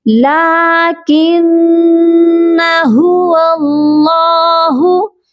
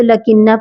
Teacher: لا کو کھینچیں گے کیونکہ لام کے اوپر کھڑی زبر ہے۔ مسٹیک یہاں پر بھی ہو جاتی ہے کہ الف کو نہیں کھینچتے تو لکنہ پڑھ لیتے ہیں، تو لا کو ہم کھینچیں گے، ادھر ہمیں کھڑی زبر نظر آ رہی ہے، اسی لیے لا کھینچ کر پڑھا جائے گا۔